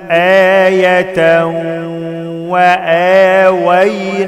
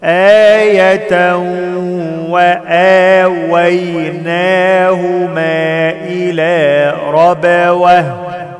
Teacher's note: تنوين بعد واو إدغام بغنة